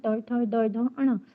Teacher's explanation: जिनका उच्चारण मूर्धा से होता है। मूर्धा मतलब हमारी जीभ जो है ऐसे पलटती है और पलट करके जो हमारे तालु के सामने वाले पार्ट है उसको स्पर्श करती है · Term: मूर्धन्य ध्वनि